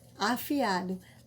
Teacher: cada vogal mantém a sua sílaba ou a sua individualidade fonética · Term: hiatos